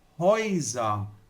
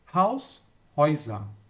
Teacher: Então, existe uma regra que diz, quando eu tenho um A com trema seguido de U, né, isso forma um ditongo e tem o som de Oi. Então, aqui eu não vou falar Helsa, eu vou falar Häuser.